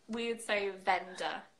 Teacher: We would say vendor, so we wouldn't pronounce that R.